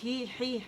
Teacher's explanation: ہا کا بھی مخرج وہی ہے جہاں پہ عین کا مخرج ہے